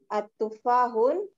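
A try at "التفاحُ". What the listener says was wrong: Enggak boleh at-tufahun. Ya, kalau ada alif lamnya, enggak boleh bertanwin. Oke, at-tufahu.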